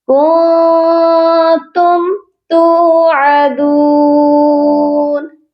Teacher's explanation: کنتم توعدون، تا کے ساتھ بھی واو مدہ ہے اور دال کے ساتھ بھی واو مدہ ہے، دونوں واو کو ایک الف کی مقدار لمبا کر کے پڑھا جائے گا